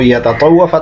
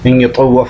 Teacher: تا کو طا کر دیا، طا کا طا میں ادغام کر دیا